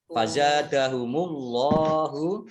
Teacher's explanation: Tapi kalau dhammah ini ya, fazadahumullahu, Allahnya dibaca tebal.